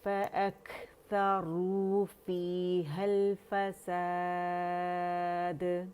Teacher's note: جب روانی پڑھیں گے تو ہا کو ہم لام سے جوڑ رہے ہیں، ٹھیک ہے. فَأَكْثَرُوا فِيهَا الْفَسَادَ.